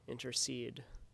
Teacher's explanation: an anapest is a foot with three syllables Al together which a stressed syllable is preceded by two unstressed syllables